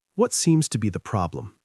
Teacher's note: Notice how the voice falls at the end.